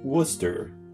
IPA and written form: ˈwʊs tər (Worcester)